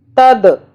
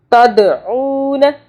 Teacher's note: دال پہ قلقلہ کرنا ہے، یعنی کہ یہاں پہ جھٹکا دینا ہے۔